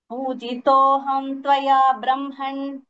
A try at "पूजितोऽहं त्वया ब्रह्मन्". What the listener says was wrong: ब्रह्मन् न not ण पूजार्हेण सुसत्कृतः